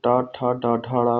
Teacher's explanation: जब ट ठ ड ढ ड़ का उच्चारण करते हैं तो आपकी जुबान जो है टंक है हल्की सी फोल्ड होती है और मुख के ऊपरी हिस्से में टच होती है और वर्णों का उच्चारण हो जाता है तो मूर्धन्य ध्वनि है